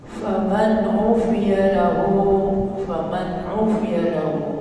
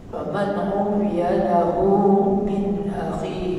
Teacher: Nun mati bertemu dengan ain izhar halqi